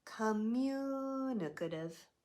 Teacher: all of these other vowel sounds except for the stress one change to what we call the schwa sound